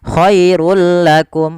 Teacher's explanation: Awalnya khairun, ketika bertemu lam langsung dimasukkan ke huruf lam tanpa ada penahanan. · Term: idgham bila gunnah